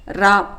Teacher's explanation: நாவின் நுனி மேல் அன்னத்தில் மையப்பகுதியை உரசுவதால் தோன்றும் எழுத்து ரா